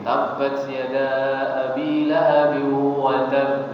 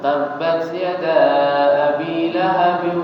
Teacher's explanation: huruf ba yang harusnya dibaca Qalqalah ketika berhenti